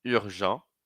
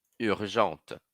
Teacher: Masculino, urgent, não falo T. Feminino, urgente, falo T e não falo E.